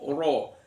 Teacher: ro-nya dibaca tafkhim, ro fathah dibaca tafkhim